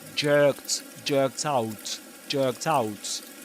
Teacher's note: Anyway, this is a kind of fancy term to refer to the linking of a final consonant to the initial vowel sound in the next word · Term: catenation